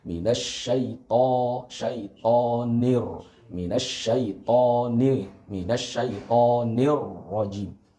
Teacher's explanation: Ro di sini dibaca tafkhim atau tebal karena ro di sini berharokat fathah.